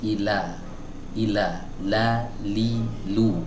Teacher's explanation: Nah, jadi pinggir depannya ini ya, yang kanan dan yang kiri ini disertakan. Ya, jadi bagian lidah yang menempel ke muqaddamul hanak, ke langit-langit bagian depan itu agak lebih banyak daripada sekedar kita mengucapkan huruf L dalam bahasa Indonesia gitu ya. Jadi bukan ila tapi ila, la, li, lu, bukan la, li, lu. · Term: huruf lam